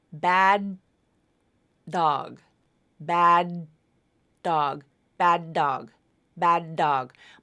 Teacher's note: you're linking a final D to an initial D so it's just like there's one D sound in there but it still is unreleased that first part think about it